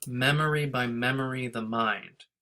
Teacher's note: there's a lot of unstressed syllables next to each other